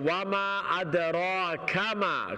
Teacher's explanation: کاف کے بعد میم پہ فوراً چلی جائے. کاف کو لمبا بالکل نہ کرے، میم لمبا ہے.